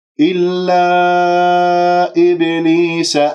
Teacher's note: إبليس الباء هنا مقلقلة قلقلة صغرى في وسط الكلام